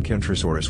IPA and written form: ˌkɛntroʊˈsɔːrəs (Kentrosaurus)